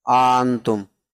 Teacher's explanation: اور اس میں یہ بھی جائز ہے کہ حمزہ میں تسہیل کر دیں، بین بین، بین بین قریب یا بین بین بعید، تو حمزہ کو اپنے مخرج اور الف کے مخرج کے درمیان پڑھیں، آنتم، دوسرے حمزہ کو اپنے مخرج اور الف کے مخرج کے درمیان پڑھیں، آنتم۔ اور یہ بھی جائز ہے کہ دونوں حمزہ کے درمیان الف متوسط لے آئیں، الف متوسط درمیان میں الف لے آئیں۔